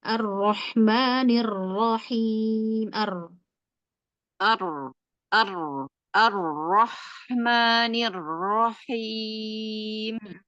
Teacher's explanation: Arro arro ada getar ya. Rnya tetap dimunculkan getarnya walaupun tidak berlebihan.